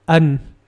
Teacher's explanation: on the second word an the u sound is very short but the n Sound is very long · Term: short sound